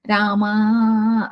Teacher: That akara is pronounced long way. That is called Pluta.